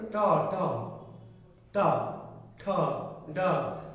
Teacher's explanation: ট ঠ ড ঢ বললে জিহ্বার অগ্রভাগটা কি বাঁকা হয় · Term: জিহ্বার উল্টানো অগ্রভাগ